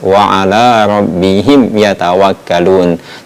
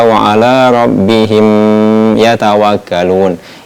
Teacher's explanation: Mim sukun ataupun mim mati bertemu dengan huruf ya, maka ini tidak perlu dibaca dengung. dibaca dengan izhar ataupun dibaca dengan jelas.